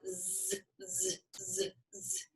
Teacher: for our Z sound, z, z, z, z, you feel that vibration, right?